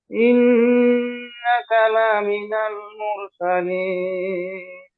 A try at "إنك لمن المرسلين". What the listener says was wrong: ভাই লাতে মাদ নাই, লামিনাল, লাতে মাদ করলেই মিনিং একদম চেঞ্জ, আল্লাহ যা বলছে এর উল্টোটা হয়ে যাবে। ইন্নাকা লামিনাল